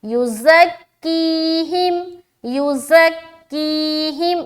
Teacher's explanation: की में प्रेशर क्योंकि यहाँ पर या मद्दा हो रहा है